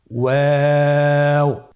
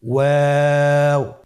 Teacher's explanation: 2 ঠোঁট গোল করে মাঝখানে ফাঁক রেখে হরফটি উচ্চারণ করতে হবে